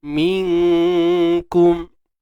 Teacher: Ingat huruf kaf ni nipis, so dengung nipis. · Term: ikhfa hakiki